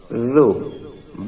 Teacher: উ জু জাল, জালের উচ্চারণটি নরম হবে। জিহ্বার আগা সামনের উপরে দুই দাঁতের আগার সঙ্গে লাগিয়ে নরম উচ্চারণ।